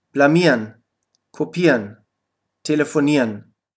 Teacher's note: Verben, die auf IEREN enden, kannst du am Ende IERN aussprechen.